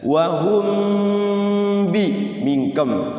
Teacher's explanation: Mim mati bertemu ba. Apa? Ikhfa syafawi, mingkem mulutnya. Mim mati, mim sama ba itu hurufnya apa berdekatan.